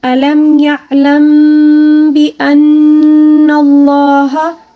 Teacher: میم ساکن کے بعد جب با آ جائے تو اس میں اخفا محل غنہ ہوتا ہے